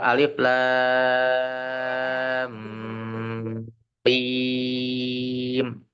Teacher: ada lam mad bertemu dengan mim sukun maka dibacanya lamnya di situ enam harakat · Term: mad lazim harfi mutaqqal